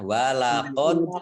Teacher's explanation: Walaqad, dalnya dal sukun, ini bacaan qalqalah, ya. Memantulnya ditampakkan